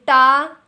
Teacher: आप नहीं बोल पाएंगे क्योंकि आपकी जो जीभ है वो टा बोलने पर, रा बोलने पर, णा बोलने पर, और इस प्रकार आपकी अगर मैं बात करूँ ऋषि बोलने पर, आपकी जो जीभ है वो मुड़ेगी बीच से और मुड़ करके ऊपर छू जाएगी तालु में। क्योंकि अगर सीधी सीधी तालु में छुएगी तो वह तालु वाले व्यंजन हो जाएंगे, लेकिन ये कैसी छू रही है? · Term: मूर्धा